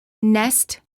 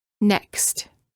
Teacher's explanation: Notice that the first word contains just an S sound, and the second word contains a K and S sound and is spelled with the letter X.